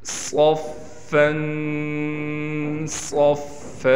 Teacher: صاد میں سیٹی بھی نکالیں گے اور صاد کو موٹا بھی کریں گے۔ فا پر تشدید ہونے کی وجہ سے ٹھہراؤ بھی کیا جائے گا، اور فا پر ہم غنہ بھی کریں گے۔